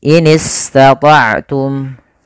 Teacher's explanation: sin alirkan nafas kita karena dia bacaan rikhwah atau rokhawah, dan juga ada sifat sofirnya.